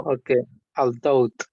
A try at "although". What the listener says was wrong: No, without the T. although.